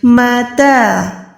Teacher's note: میم زبر کو نارمل رکھیں، تا کھڑی زبر کو لمبا کریں